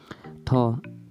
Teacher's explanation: ठ उच्चारण प्रयत्नको आधारमा स्पर्शी हो। प्राणत्वको आधारमा महाप्राण हो।